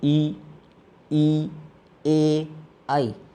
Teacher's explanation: उच्चारण के समय जीभ का आगे वाला जो भाग है वो ऊपर की ओर उठता है। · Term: अग्र स्वर